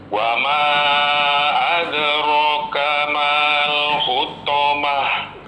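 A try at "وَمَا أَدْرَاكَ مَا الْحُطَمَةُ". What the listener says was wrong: Mal pendek Pak.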